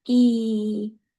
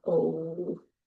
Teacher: E is made in the front, whereas O is made in the back